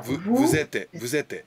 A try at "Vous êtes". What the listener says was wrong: Très bien.